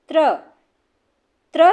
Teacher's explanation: त्रिशूल का त और र से मिलके बनता है। तो दंत त जो है वो दंत वर्ग में और र मूर्धा में। तो इसलिए ये हो गया दंत और मूर्धा। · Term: संयुक्त व्यंजन